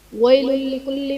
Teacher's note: لام پر دو پیش کی تنوین ہے، تنوین کے بعد حروف یرملون میں سے لام ہے، تو یہاں پر ادغام بلا غنہ کا قاعدہ ہوگا، یعنی یہاں پر ہم تنوین میں غنہ نہیں کریں گے · اعوذ باللہ من الشیطان الرجیم بسم اللہ الرحمن الرحیم ویل لکل میں یا ساکن سے پہلے زبر ہے، یا لین کا قاعدہ ہے، اسے کھینچنا نہیں ہے، کو نرمی سے پڑھنا ہے۔